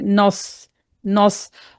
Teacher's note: अब क्योंकि स्वाद जो हरूफ मुस्तालिया में से है तो हम इसको मोटा करके पढ़ेंगे। लेकिन जब हम स्वाद को मोटा पढ़ेंगे तो नून को मोटा नहीं करना।